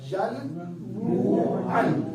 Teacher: اب نون کی آواز کس میں بدلے گی؟ میم میں